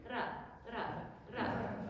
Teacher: it's just one tap of the tip of the tongue against the alveolar ridge. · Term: voiced alveolar tap